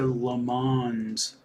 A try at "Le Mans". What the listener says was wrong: Le Mans. We don't pronounce really the N or the S. Le Mans.